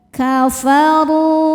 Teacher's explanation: Huruf ro dibaca tafkhim karena berharakat dommah. Cara bacanya tebal. Kafaru ru hukumnya mad thobi'i zohiri karena ada wau sukun sebelumnya baris dommah.